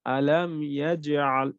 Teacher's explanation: একটু নরমাল করে পড়েছিলাম, কলকলা করেছি বাট নরমাল, ছোট কলকলা।